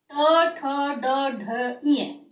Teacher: जब अपन इनको बोलते हैं तो अपनी जीभ जो है अंदर मुड़ करके जाती है और बाहर आकर के लुढ़कती है, इसलिए इन्हें मूर्धन्य कहा जाता है